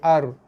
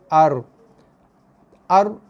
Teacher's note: Getaran tu hanya berlaku sekadar 2 ke 3 kali getaran je.